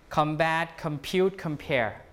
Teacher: changes to come before b p and p combat compute compare same thing bilabial sound okay assimilation